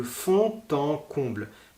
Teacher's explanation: le d de fonds et de en fond en comble on va le lire presque comme un thé